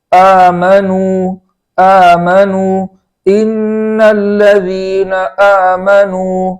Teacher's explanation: اس کے بعد ہے آمنو کے حمزہ کو خوب جھٹکے کے ساتھ پڑھیں گے اور کھڑا زبر ہونے کی وجہ سے وہاں ایک الف کے برابر تاخیر کریں گے.